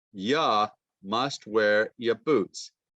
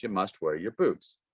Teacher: You changes to ya, and your changes to ya.